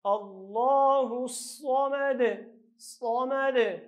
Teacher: نو دلته به صاد ډک او آخر کې به قلقله کوو، او که چېرته یو ځای وایو نو د دا دال پیښ یا ضمه به ښکاره کوو.